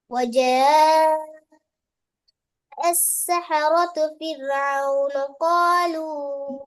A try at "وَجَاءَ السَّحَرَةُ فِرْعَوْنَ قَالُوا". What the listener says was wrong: ஃபிரௌனையா என்ன மாதிரி ஓதுறீங்கன்னு கிளியர் இல்ல என்ன சவுண்ட் வெளிப்படுத்தணும் சொல்லுட இறுதி எழுத்துக்களை தெளிவாக வெளிப்படுத்தாம அடுத்த சொல்லுக்குள்ள பேத்திட்டு நுழைக்கப்படாது நுழைஞ்சா பிரச்சனை பேத்திடும் பெஸ்ட்டுக்கு வர சொல்ல இறுதி எழுத்துக்களை தெளிவா உச்சரிக்கிறதுக்கான நேர கால அவகாசத்தை கொடுத்துட்டு தான் அடுத்த சொல்ல ஸ்டார்ட் பண்ணணும் ஓடப்படாது அந்த ஓட்டம் இறுதி எழுத்து எல்லாத்துலயும் இனத்தை ஓதிங்கன்னு இல்லாம இப்போ அது பெரிய பெரிய பேத்திடும்